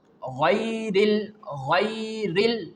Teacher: during its pronunciation, the sound is thick, heavy, and there is a rising of tongue in its pronunciation. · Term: letter Ghain